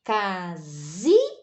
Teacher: aqui a tônica é na penúltima então aqui é uma paroxítona